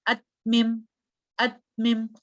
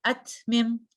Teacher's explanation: اگر میں نے ہمس نہیں کیا تو آواز ایسی ہوگی ات میم، ات میم، آپ کو فیل ہوگا ایک گیپ، لیکن تا چونکہ ہمس کا بھی لیٹر ہے تو میں پڑھوں گی ات میم۔